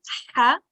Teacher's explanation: you'll feel a scratching in your throat. It will be like a rubbing sound. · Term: throat letters